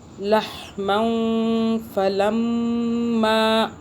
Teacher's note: میم مشدد پہ غنہ کیا ہم نے